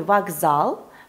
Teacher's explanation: И наоборот, глухие в слабых позициях могут озвончаться. Например, в слове «вокзал» глухая «к» звучит как «г»